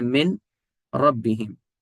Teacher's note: پہلی مثال انہوں نے من ربہم، نون ساکن کا حروف یرملون میں سے ایک حرف را، اس میں یہ داخل ہوا ہے تو ادغام تو ہو گیا ہے لیکن اس میں غنہ نہیں ہوا